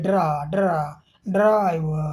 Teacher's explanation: यहाँ बना हुआ है, इसमें जीभ मसूड़ों को छूती नहीं है, हवा बीच से निकलती है। साथ ही ड के ठीक बाद र होने के कारण ड्र ड्र ड्र का उच्चारण थोड़ा घर्षण के साथ ड्राइव ड्राइव के साथ होता है, जिसे अफ्रीकेट संघर्ष जैसे करते हैं, ड्रा ड्रा ड्राइव खा ड्राइव जैसा प्रभाव मिलता है इसके उच्चारण में।